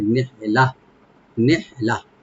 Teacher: নেহলাতান হাটাকে একটু আমরা হামস করবো এখানে, নেহ লাম ওপেন থাকবে, এখানে তানভিন আছে, আমরা যদি মিলাই পড়ি এখানে আমরা একফা করবো আমরা, আর যদি এখানে আমরা থেমে যাই ওয়াকফা করবো, লাস্টে যে গোলটা আছে এটা হা হয়ে যাবে, সাকিনওয়ালা হা হয়ে যাবে